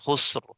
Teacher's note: اسی طریقے سے یہاں پر دیکھیں، یہاں پر را ساکن ہے، سین کو دیکھا سین بھی ساکن ہے تو خواہ پر پیش تھی اس وجہ سے را کو موٹا پڑ جائیں گے